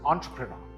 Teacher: The E is actually pronounced as an O, and the stress is on the first syllable.